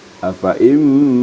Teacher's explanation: Jadi diidgamkan serta digunnahkan, didengungkan. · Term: idgham ma'al gunnah